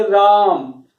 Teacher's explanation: जब राम बोलेंगे तो जो हमारे रा के ऊपर जो दबाव है वो थोड़ा ज्यादा पड़ रहा है और उसका उच्चारण जो है वो थोड़ा लंबा हो रहा है। तो इसी तरीके से जब किसी स्वर के ऊपर दबाव पड़ता है और उसको हम थोड़ा लंबा खींचते हैं तो वहां पर प्लुत स्वर आ जाता है।